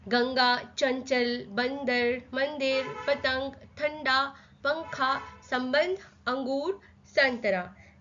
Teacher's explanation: तो ये जो बिंदु वाले शब्द है, जो वर्ण के ऊपर बिंदु लगते हैं, इन्हें हम कहते हैं अनुस्वार। जैसे गंगा, जब भी हम गंगा बोलते हैं तो वो नाक से निकलता है स्वर